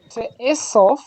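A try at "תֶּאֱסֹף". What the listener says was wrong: Nice.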